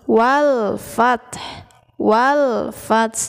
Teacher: ada alif lam bertemu dengan salah satu huruf Al Qomariyah yaitu Fa dibaca jelas Alif lamnya dibaca jelas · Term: Alif Lam Qomariah